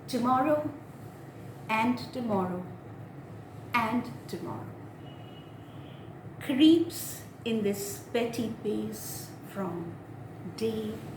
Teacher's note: it is the pentameter, one unstressed and one stressed